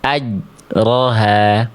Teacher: bunyi jim sukunnya nggak ada pantulannya sama sekali